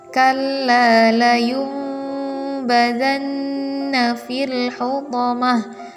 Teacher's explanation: bunyi nun sukun atau tanwin berubah menjadi bunyi mim, ditahan dan digunnah atau dengung dengan dua harokat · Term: iqlab